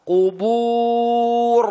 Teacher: Jadi kita tahan. Dan ra itu punya sifat takrir, getaran yang berulang.